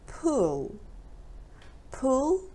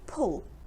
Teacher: pool is where we swim it's longer and pull it's shorter